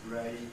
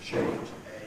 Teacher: the tongue then moves, ray, getting higher in the mouth, closer to the roof, change, a, and it's therefore called a diphthong